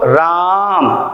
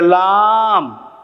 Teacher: र को ल में उच्चारित करते हैं